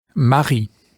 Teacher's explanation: be careful to get the gurgled French R sound in the middle of this word